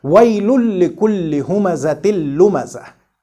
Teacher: Did you hear the noon of tanween here? No, it is not articulated at all. And this lam is articulated twice. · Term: idgham